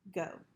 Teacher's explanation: the o is not followed by any consonants so it can go a long way it is the long o sound